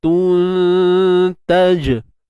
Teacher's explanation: untuk jim kita lantunkan kat sini qalqalah sughra